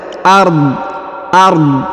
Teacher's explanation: Lahu ghaibus samawati wal ard ya, wal ard. Jadi huruf dha harus disukunkan dan dia dibaca jelas ya, wal ard, dan tidak dikolkolahkan atau dipantulkan ya.